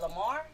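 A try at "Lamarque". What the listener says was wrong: Lamarck with a Q. Yeah, make sure you put that Q in there.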